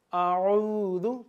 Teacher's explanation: آئین کو واضح کریں گے، اعوذ، تاکہ حمزہ یعنی کہ الف اور آئین میں واضح فرق رہے۔